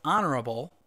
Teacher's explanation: H is a consonant but in the word honorable the H is not pronounced